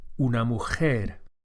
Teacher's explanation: It's similar to an English H as in help or hair but with a slightly more raspy effect. uh produced at the back of the mouth. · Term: Spanish J sound